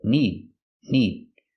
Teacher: remember the D in need is a stop d